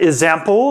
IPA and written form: əzæmpl (ezample)